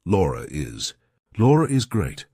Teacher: r so that schw sound sometimes is spelled like R so if I have to link my name to something else that's a vowel I have to put an r in there so I say Laura is Laura is great so push yourself · We're probably going to put an intrusive R in there.